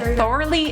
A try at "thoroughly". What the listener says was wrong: thoroughly. You enunciate too much.